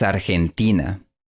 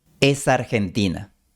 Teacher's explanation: Aquí vemos cómo la palabra es se fusiona con Argentina.